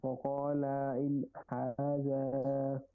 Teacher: ان یہاں پہ غنہ بنتا تھا, اس کے بعد حروف حلقی میں سے ہا آ گیا, اس لیے یہاں پہ غنہ نہیں ہو رہا, اظہار کر رہے ہیں, ان کو ظاہر کر کے پڑھ رہے ہیں.